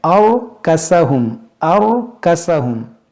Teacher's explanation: اور یہاں دیکھیں را ساکن سے پہلے زبر ہے، اس را کو بھی موٹا کریں گے